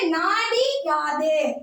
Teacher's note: அந்த மாதிரி இகரமாக மாறும்போது அந்த இகரம் தன்னுடைய ஒரு மாத்திரை அளவில் இருந்து அரை மாத்திரை அளவாக குறைந்து ஒலிக்கும் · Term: குற்றிய லிகரம்